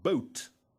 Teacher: different meaning a similar example of course is the word both if the H is dropped it comes out as boat